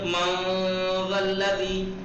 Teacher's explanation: اب نون کے مخرج کو چھپا کے نون ناک سے ادا ہوگا کھینچ کے. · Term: اخفا